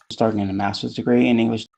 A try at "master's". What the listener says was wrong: Maybe a slight softening or deletion of that R in masters, kind of similar to the R from international towards the beginning. So it's almost like you said masters, whereas I would say masters.